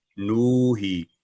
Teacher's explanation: واو حروف مدیہ میں سے ہے اور نون پر دمہ ہے تو نو کی آواز لمبی ہوگی